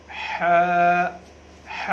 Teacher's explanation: हा जो है ये हलक से, गले से अदा करनी है।